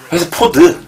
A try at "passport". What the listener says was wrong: 아, 포드 아니죠? 패스포트고.